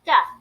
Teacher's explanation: de-stress the vowel sound in do, so the oo in do becomes a